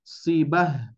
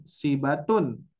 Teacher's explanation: sedangkan ketika wakaf menghentikan bacaan tidak dibaca tak, melainkan dibaca ha sukun